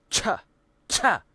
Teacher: It is made by combining two sounds, a short stop of airflow like a T sound immediately followed by a friction sound like an SH sound. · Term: affricate